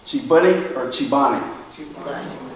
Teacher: C-E-P-A-N-E has a E in front of the P and an A behind it. Vowels, right? So that P gets voiced, and that voiced P sounds like the B.